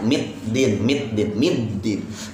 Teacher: ya dalnya kuat ya jangan ada t-nya